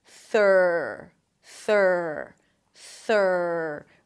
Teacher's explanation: Stick the tongue out for the TH. It's a voiceless TH. And then pull it in for the R. Make sure the tongue doesn't touch anything on the way in.